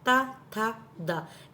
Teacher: जब आप ता, था, दा बोल रहे हैं तो आपकी टंग सीधे दांतों पर लग रहे हैं। मूर्धन्य में दांतों के अंदर लगती है, तालु में सीधे बीचों बीच तालु में लगती है।